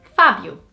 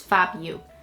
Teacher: It's not a particularly hard name, but it would probably be pronounced Fabio or Fabio, but it's Fabio. The O turns into an U sound more than O, so it's Fabio.